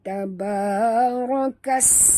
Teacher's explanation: Bunyikan safir pada sin yang mati